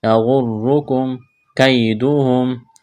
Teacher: میم ساکن کے بعد کاف ہے، یہاں پر اظہار کریں گے، یغرکم کیدہم، یا لین ہے، اس کو کھینچنا نہیں ہے